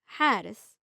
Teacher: It sounds like you are breathing on a cold window to make a steam or like gentle sigh. It's much deeper and breathier than the regular English ha. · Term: breathy ha